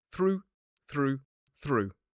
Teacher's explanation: So this time OUGH becomes that longer ooh sound.